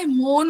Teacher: এখানে উচ্চারণটা অ থেকে বিকৃত হয়ে ও হয়ে যাচ্ছে